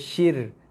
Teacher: Di sini dibaca dengan nipis. Ra ni bersifat nipis sebab ra mati sebelum dia ada huruf berbaris bawah. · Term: ra nipis